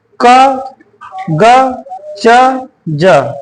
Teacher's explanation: जिन भी वर्णों का उच्चारण करने पर हमारी वायु कम लगे, ठीक, कम निकले, तो हमारे वो हो जाएंगे अल्प प्राण